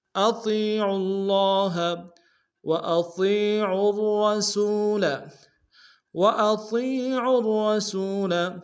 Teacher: را کو تشدید زور دیں گے، دونوں را کو موٹا ادا کریں گے